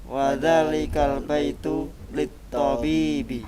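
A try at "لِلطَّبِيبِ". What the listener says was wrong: Naam, ta-nya pendek. Yang panjang adalah ba-nya. Lit-tabibi. Sekali lagi.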